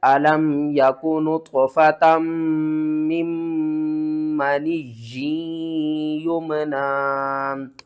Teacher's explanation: تو دونوں میم کے اوپر آپ نے غنہ کرنا ہے